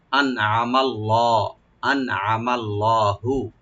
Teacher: আইন ওপেন করে পড়বো, মিমটাকে ওপেন করে পড়ে লফজ জালাল সাথে মিলাইয়া আমরা পড়াবো লফজ জালাল এখানে মোটা বা ডিপ করে পড়বো